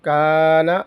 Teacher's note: کاف الف زبر کا، نون زبر نا، کانا، یہاں پر الف باریک پڑھیں گے کیونکہ کاف باریک ہے